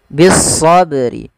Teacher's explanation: huruf lamnya diidgamkan ke huruf Shad dan tidak dibaca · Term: alif lam syamsiyah